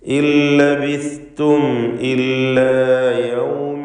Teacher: ലാമിലേക്ക് നൂനിനെ പൂർണ്ണമായും ലയിപ്പിച്ച് മണിക്കാതെ ഉച്ചരിക്കുക